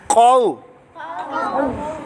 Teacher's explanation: قاف حروف مستعلیہ میں آنے کی وجہ سے اس کو موٹا کر کے پڑھیں گے